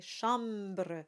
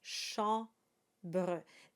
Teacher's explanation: the m is just there to let you know that the a is nasalized